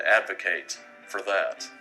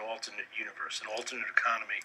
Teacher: So ATE in the verb sounds ate. In the noun sounds it.